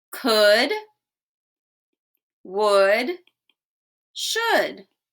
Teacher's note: When we say could, would, should, we do not hear the L at all. The L is silent.